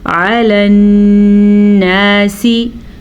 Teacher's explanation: नून का गुन्ना अदा करना है क्योंकि नून के ऊपर शद आ चुकी है, इसीलिए हम नून को गुन्ने के साथ पढ़ेंगे।